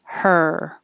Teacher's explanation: so all these crazy spellings have the same sound er and it's just the tongue in the r position and making noise